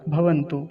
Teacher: भवंतु अब खींच कर नहीं बोलेंगे लंबा क्योंकि बड़े ऊ की मात्रा होती तो लंबा खींच कर बोलते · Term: ह्रस्व उकार